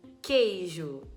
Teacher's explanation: eu não escuto o barulho do u eu não falo queijo eu falo queijo como se fosse com K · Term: dígrafo